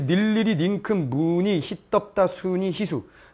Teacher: 자음을 첫 소리로 하는 이중모음의 의는 단모음 이로 발음한다